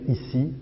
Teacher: Lorsque vous prononcez un I, l'aperture de la voyelle est beaucoup plus petite et c'est beaucoup plus serré, étroit, le filet d'air qui passe.